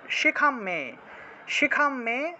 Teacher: অনুস্বার থাকলে ম উচ্চারণ হয়